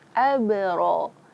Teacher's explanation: ro di sini fathah, maka dibaca tebal.